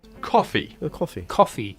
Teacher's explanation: Yeah, it's an open, a more open vowel.